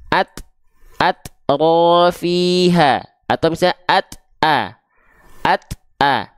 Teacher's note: Suaranya tertahan kan? At a, nggak dibaca at, nggak mengalir suaranya. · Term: syiddah